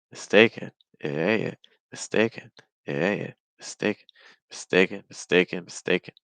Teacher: the stress is on a that's going to be a little bit longer and higher in Pitch everything else is going to be lower in pitch and faster